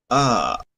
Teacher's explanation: tendríamos que usar una vocal que se le llama a centralizada